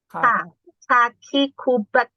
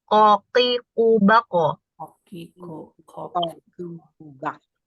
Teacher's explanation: Bedanya sama kaf, kalau kaf, nah kaf itu kalau misalnya kita ada tangan di sini atau tisu ya atau kertas itu kalau kita mengucapkan kaf itu ada udara yang keluar